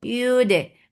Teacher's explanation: dal will get sifa of qalqala and give a qalqala very clear sound. Yude, iri for kasra give e sound and the sound and raw is light.